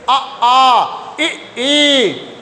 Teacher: इनका उच्चारण करोगे तो ओठ आपका गोलाकार नहीं होगा चाहे आप करके देख लीजिए अ कोई गोलाकार नहीं है अ